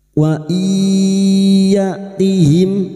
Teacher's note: Maka masuk dengan mendengung. Masuk pada huruf ya dan mendengung selama tiga harakat. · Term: idgham bighuna